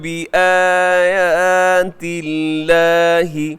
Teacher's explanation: لفظ اللہ کو یہاں باریک رکھیے گا، اس سے پہلے تا کے نیچے زیر ہے، کسرہ ہے تو باریک رکھیے گا